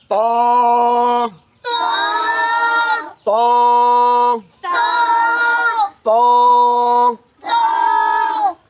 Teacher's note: ত হরফ উচ্চারণ করার সময় এই যে সামনের যে জিহ্বাটা আছে, এই জিহ্বাটা সামনের উপরে 2 দাঁতের গোড়ার সঙ্গে লাগাই দিতে হয়